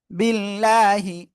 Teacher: আল্লাহ শব্দের লামের ডানে জের চিকন করে পড়ব আর এক আলিফ টান হবে সবাই একসাথে এ পর্যন্ত জোরে জোরে